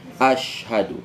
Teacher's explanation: huruf Sya itu Tengah lidah